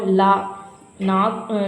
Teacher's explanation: நாக்குடைய இரு பக்கமும் தடித்து மேல் அன்னத்தின் நடுப்பகுதியை தொடுவதால் லகரம் பிறக்கும்.